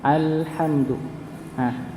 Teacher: tempatnya ujung lidah bertemu dengan langit-langit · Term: huruf lam